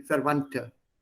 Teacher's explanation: Verwandte, also nicht Verwandte, da sagt man Verwandte. D und T zusammen, sie machen ein T